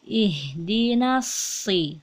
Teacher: Shad termasuk huruf tebal atau isti'ala. Jadi suara kita naik ke langit-langit.